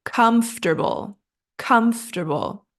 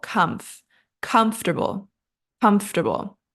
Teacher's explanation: the correct pronunciations so we want to break this down comble it's just three syllables and that middle part is pronounced quickly like tur comfortable comfortable and the stress is on our first syllable com